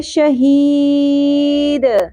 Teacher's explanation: دال ساکن پہ قلقلہ ہوگا اور یہاں پر مد عارض وقفی ہوگی